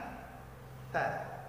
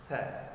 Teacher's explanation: Dihembuskan karena dia juga bahagian dari huruf mahmus, ta. Namun jangan sampai kita mengeluarkan bunyi S.